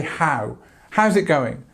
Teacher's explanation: We use this ow sound on how, so how's it going? And actually we don't shorten this. We say how.